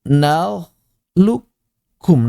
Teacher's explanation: Kemudian mengucapkan huruf kaf bertasydid min ghairi baqa'i syai'in, tanpa menyisakan sedikit pun min sifatil qaf, dari sifat-sifat qaf. Jadi benar-benar hilang si qafnya 100%. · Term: idgham kamil